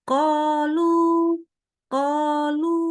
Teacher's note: boleh membulatkan ya Jadi hati-hati qolu bukan qolu ya sengaja dibulatkan bukan bibir yang bulat tapi pangkal lidah yang naik ya untuk membaca huruf qaf dengan harakat fathah